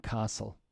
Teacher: Yes, the T is dropped.